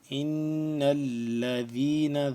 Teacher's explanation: ان الذین پہ غنہ ہوگا کیونکہ یہ نون ہے مشدد